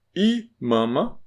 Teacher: I Lembra que o i no começo? O i no começo, ele não é nasal.